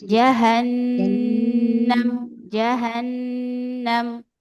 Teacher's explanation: Kemudian ro-nya juga biro, birabbihim. Nunnya tahan, dia ada gunnah asliyah.